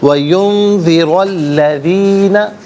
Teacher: را پر زبر، اس سے الذین کے لام کے ساتھ ملائیں گے، درمیان میں سے الف یعنی حمزہ کو حذف کریں گے۔